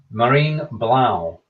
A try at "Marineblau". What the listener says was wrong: Almost. Marineblau. There is no silent E.